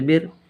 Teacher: کو پہلے والے حرف سے ملا کر پڑھتے ہیں، جیسے بر، را ساکن سے پہلے زیر تو را باریک ہوگی